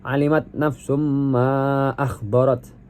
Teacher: Kemudian ayat 14 yaitu alimat nafsum ma akhbarat, itu ada nafsum ma di situ dihukumi idgham bi gunnah karena tasydid bertemu dengan huruf mim dibaca dengan dengung